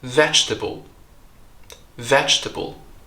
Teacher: So we drop that syllable. And the first syllable, veg, ends with a ch. There's no vowel there. It's not j or g, but veg, ch.